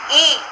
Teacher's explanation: जीभ का अग्र भाग ऊपर कठोर तालु के बहुत समीप पहुंच जाता है और ओष्ठ फैले हुए रहते हैं।